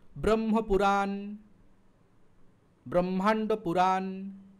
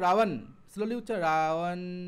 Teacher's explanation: দেখো দুটো ঠোঁট লাগছে, ঠোঁট এবং ওষ্ঠ মানে অধর ওষ্ঠ স্পর্শ করছে, তার মানে ওটা বর্গীয় বা